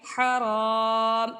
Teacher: را کے اوپر زبر ہے، اس لیے را کو ہم پر پڑھیں گے، الف سے پہلے زبر ہے، الف مدہ ہے، اس کو بھی ایک الف کی مقدار یعنی حرام اس طرح سے پڑھنا ہے۔